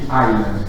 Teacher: donc sans le S, qui est pourtant présent dans la graphie